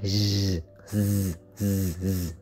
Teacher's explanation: Ngậm hai cái răng lại phát rung rung cái thanh quản mình, ngậm hai cái hàm răng ngậm lại rồi rung cái thanh quản rồi phát rung nó ra thành chữ z